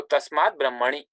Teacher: takara becomes dakara because it is followed by a consonant from the third or fourth column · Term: consonant sandhi